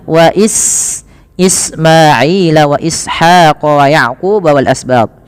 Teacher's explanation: alirkan nafas pada lafal sin dan jangan sampai terubah dengan baca wa is dengan sin, dengan sa atau dengan shin, atau dibaca wa Ismaila.